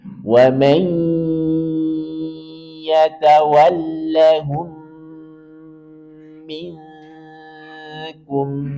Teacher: Prinsipnya masukkan ke ya dengan dengung. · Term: idgham bi gunnah